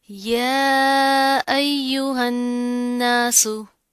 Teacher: या के ऊपर खड़ा ज़बर आ रहा है एक अलिफ के बराबर और ऊपर मद भी आ रही है, तो इसको खींच कर लंबा करके पढ़ेंगे